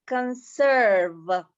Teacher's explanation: in india you'll say conserve so that r will be there definitely